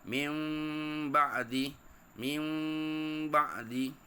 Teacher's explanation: hendaklah ditukarkan bunyi Nun kepada bunyi mim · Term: iqlab